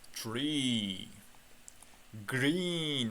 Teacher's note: ikkita e kelib qolsa bu i deb cho'zib o'qilarkan